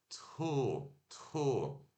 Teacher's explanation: O T e um arzinho suave sai e depois o som de O. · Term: som aspirado